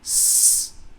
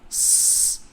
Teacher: Kemudian yang kedua yaitu sukunnya pun otomatis salah. Karena sukun sin tidak boleh terdengar tebal. Dengan s, itu yang disebut tebal adalah sin yang pertama. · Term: tipis